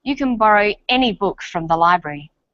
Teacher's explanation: any is stressed this tells us that we're talking about an unrestricted quantity or unlimited choice